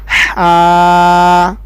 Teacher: اگلا حرف ہے ہمارا ہا، حلق کے درمیان والے حصے سے ادا ہوتا ہے